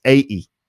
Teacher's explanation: he doesn't really pronounce the t part